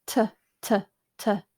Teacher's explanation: it's just the percussive sound no vibration but it's the same mouth shape